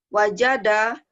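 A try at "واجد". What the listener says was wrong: iya pinter,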